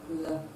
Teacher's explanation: So when you produce the lateral sound, there is obstruction of air at the center of the mouth, but the air is freely flowing, will be flowing freely on the two sides of the mouth. That is, the tongue will be blocking the center while the air will flow through the two sides of the tongue.